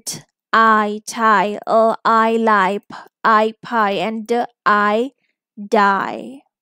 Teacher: In I, if you see your mouth, it's again changing the shape. This is the long vowel and it's also typically a diphthong sound. I, I. It's a gliding vowel sound.